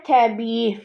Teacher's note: i-nin biri düşür, biri uzanır